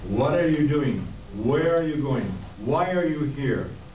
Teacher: But many Americans and many Englishmen drop the H entirely. As I said, the Cockney dialect of London does not pronounce the H at all